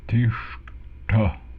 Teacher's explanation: We have tiṣṭhati, retroflex S, retroflex T, or ta.